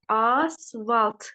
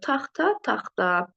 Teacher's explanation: Bunlar tələffüzdə olacaqdır asfalt şəklində. Yəni ikinci kar samitimiz öz cingitili qarşılığı ilə əvəz olunacaqdır.